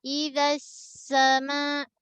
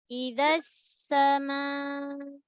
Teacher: Dekat sin jaga rakhawah, jaga sofir. Meleret Idza sama.